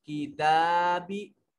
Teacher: किताबी ता को लंबा करके पढ़ेंगे।